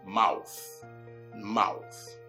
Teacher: check out how my tongue virtually sticks out of my mouth through my front, upper, and lower teeth, releasing some air in the process.